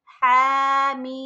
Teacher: ہا پڑھنے کے ساتھ جلدی سے ہم میم پڑھیں گے، ناک میں آواز نہیں لے کر جائیں گے، کیونکہ یہ میم مشدد نہیں ہے، یہ سادہ میم ہے، ٹھیک ہے۔